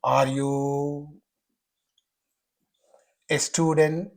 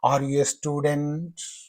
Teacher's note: Rising inonation means the pitch of the voice will go high towards the end of that sentence or phrase